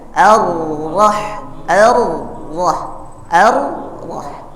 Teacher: getarannya tidak boleh lebih dari tiga ini namanya takrir menyedikitkan getar